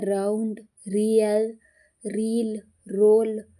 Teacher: ಯಾವತರ ಅಂತ ಹೇಳಿ ನಾವು ತಿಳ್ಕೊಬಹುದು ಈಗ ಉದಾಹರಣೆ ತಗೊಳಿ ಆರನ್ನ ಅನ್ನೋ ಅಕ್ಷರ ಆರ್ ಅಂತ ಹೇಳಬೇಕಾದ್ರೆ ನಾಲ್ಗೆಲಿ ವೈಬ್ರೇಶನ್ ಆಗುತ್ತೆ ರ ಎರಡು ಸತಿ ಕೇಳುತ್ತೆ